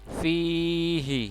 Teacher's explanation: Kisina, na-nya pendek. Fi-nya panjang 2 harokat. Fihi, hi-nya pendek.